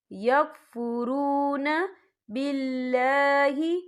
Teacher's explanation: ان الذین یکفرون، یکفرو، یہاں پہ واو مدہ ہو رہا ہے، واو ساکن ہے، واو ساکن سے پہلے پیش ہے، تو ہم یہاں 2 یا 3 حرکت کے برابر کھینچ کے پڑھیں گے